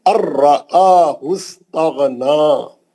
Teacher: نون نہیں پڑھیں گے, نون را میں گھس گیا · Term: ادغام بلا غنہ